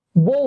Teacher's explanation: এই ব আপনি কখনোই সিঙ্গেল উচ্চারণ করবেন না, এটার সাথে একটা ওকার দিয়ে উচ্চারণ করা লাগবে।